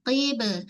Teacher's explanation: Kemudian qib huruf qaf tebal. Huruf ba huruf bibir. So melantun pada ba jangan bunyi be.